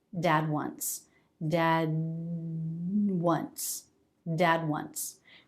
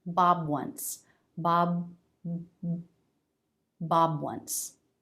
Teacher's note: there's just a little bit of sound in the vocal cords, which does distinguish the sounds, even though they're not released. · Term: voiced stop consonants